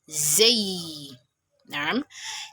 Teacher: the tongue gets slightly pressed up against the front tooth, with the upper and lower front tooth meeting together and making a buzzing sound. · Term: Zay